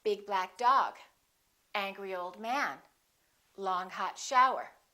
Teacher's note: we emphasize the first adjective and the noun